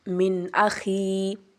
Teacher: یہاں پہ ہم نون کو اظہار یعنی کر رہے ہیں